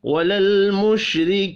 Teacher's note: وللمشرکین، لام ساکن پر قلقلہ نہیں کریں گے، را کو زیر کی وجہ سے باریک پڑھنا ہے، یا مدہ 1 الف کے برابر کھینچ کر پڑھا جائے گا۔